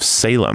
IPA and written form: ˈseɪləm (Salem)